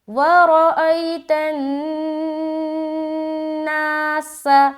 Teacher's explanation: سین کی ادائیگی سیٹی نما س